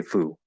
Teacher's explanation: the informal, casual, kind of funny way to say fool, you just drop the half L and you say foo